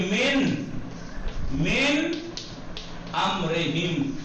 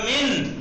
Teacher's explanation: اگر نون ساکن کے بعد ان میں سے کوئی ایک آ جائے تو اظہار ہوگا، یعنی نون اپنے اصلی مخرج سے بغیر کسی دست درازی کیے ادا ہوگا